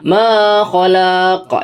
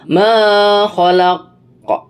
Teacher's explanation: yang ini adalah qalqalah kubro, yaitu cara membacanya memantul dengan kuat. Karena huruf ko-nya ini adalah salah satu huruf qalqalah, yaitu baju di toko, kemudian dimatikan dengan tanda waqaf, maka dia memantul dan tidak panjang. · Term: qolqalah Kubro